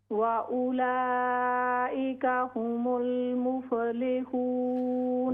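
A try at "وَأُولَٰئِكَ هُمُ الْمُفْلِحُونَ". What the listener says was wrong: वउलाइका हुमुल मुफ्लिहून। फा में कलकला न करें।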